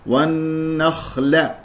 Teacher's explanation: لا تقول والنخل والن تفخم لان جاوره الخاء المفخم مرتبه رابعه الخاء يجري فيها صوت والنفس